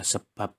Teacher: yang dihasilkan oleh bibir atas dan bibir bawah dengan cara dihambat B pada kata sebab termasuk konsonan bilabial bersuara